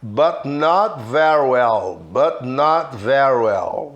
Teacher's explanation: Juntando esse som very well para falar rápido, como se eu matasse o Y e juntasse o R com o well, que também é com a língua enrolada para falar o L, ó.